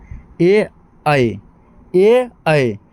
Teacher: कुछ ऐसे वर्ण है जो कंठ और तालु दोनों के सहायता से निकलते हैं, ऐसे वर्ण को हम लोग कहते हैं कंठ तालव्य।